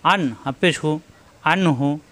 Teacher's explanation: এখানে আসছে নুন সাকিন, নুন সাকিনের পরে হা আসছে ইজহার, স্পষ্ট হবে, গুণ্য হবে না।